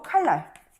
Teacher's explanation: 자, 유음화 보겠습니다. 유음화는 리을과 인접한 니은이 리을로 변하는 현상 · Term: 순행동화